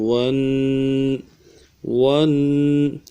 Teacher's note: ایک الف مقدار میں غنے کے ساتھ کھینچیں گے